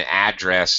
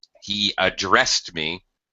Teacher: as a verb he addressed me notice my change in pronunciation I changed the stress from the first syllable to the second syllable